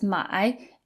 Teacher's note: And the third tone has kind of a dip in the middle.